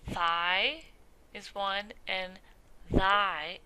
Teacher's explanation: So these sounds are produced with the tip of the tongue between the teeth or just behind the teeth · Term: Interdental